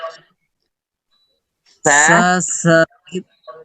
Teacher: ujung lidah kita ketemu dengan gigi seri bagian atas